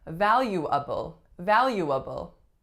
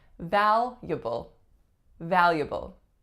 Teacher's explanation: we're taking out a whole syllable and we're getting valuable